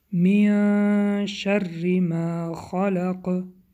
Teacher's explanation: بعد از حرف نون حرف شین آمده است، در اینجا اخفا می باشد. من شری حرف را باریک خوانده می شود به سببی که با کسره آمده است.